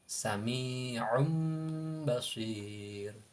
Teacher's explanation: Contoh sami'un basir, asalnya sami'un basir. Nah, karena di situ nun sukun tanwin bertemu ba, maka suara atau makhraj tanwinnya itu ditukarkan menjadi mim · Karena di situ nun sukun bertemu ba, maka makhraj nun sukunnya ditukarkan sama mim. Jadi dibaca mim ba'di. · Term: iklab